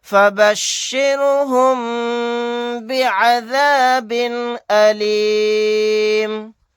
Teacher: میم ساکن کے بعد با آ گیا تو یہاں پر غنہ کر کے ہم اس طرح پڑھیں گے